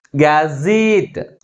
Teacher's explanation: But which syllable is pronounced with a greater force? Last syllable is pronounced with greater force comparing with another one. That's why the primary stress is on the last syllable.